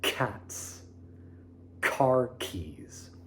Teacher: a more percussive sound that is aimed with the back of the tongue raised to the roof of the mouth, as if you're saying the beginning of the word cats.